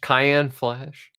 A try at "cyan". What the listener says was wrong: Cyan? It's not cayenne. We're not cooking, you fucking idiot. It's always been cyan.